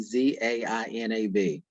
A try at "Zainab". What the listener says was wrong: Zainab, say nub, nub, like knob, but nub. Zainab, the B is not silent.